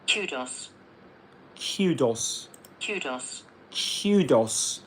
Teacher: So in British English, you get that y sound after the k.